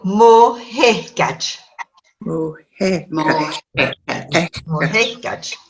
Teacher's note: when you have lenition, you have to say mo hehgaj, and the S disappears. It's still in the spelling, but the S disappears.